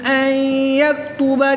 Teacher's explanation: نون ساکن کے بعد یا حروف یرملون میں سے ہے تو یہاں پر ادغام مع الغنہ ہوگا، غنہ کے ساتھ ادغام کریں گے